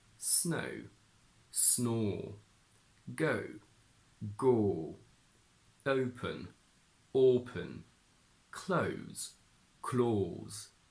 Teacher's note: in Jordy it transforms into a very strong and rounded or sound